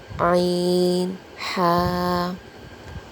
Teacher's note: حلق کے درمیانی حصے سے ادا ہوتے ہیں، یعنی مڈل تھروٹ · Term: حروف حلقی